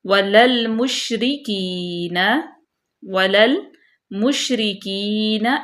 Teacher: شین کی آواز پورے منہ میں گونجے گی کیونکہ یہ حروف شجریہ ہے